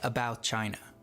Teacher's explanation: This is known as a juncture. When saying a phrase like about China, the T in about is often dropped